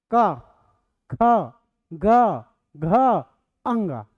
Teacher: क, ख, ग, घ, अंग सब कंठ में आ रहा है। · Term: कंठव्य वर्ण